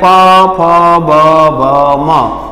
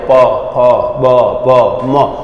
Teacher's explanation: આ કેવું છે તો બંને ઓડ ભેગા થાય. જો પ ફ બ ભ મ, એટલે કહેવાય અને ઓષ્ટ્ય.